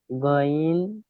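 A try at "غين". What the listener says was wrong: হলো না, গইন কি 3 আলিফ টান দিতে হবে, গইন, পুরো 3 আলিফ টান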